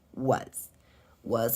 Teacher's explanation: here the S also makes a Z sound